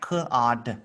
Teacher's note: Remember, this one here just makes the short O sound, so it makes the ah sound